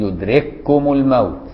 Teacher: إذا كان اللفظ الحرف مثلين، واخد بالك إزاي؟ بيروحوا داخلين في بعض يبقوا حرف واحد